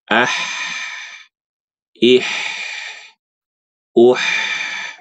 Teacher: Sempitkan tenggorokannya, bunyinya ih, gitu.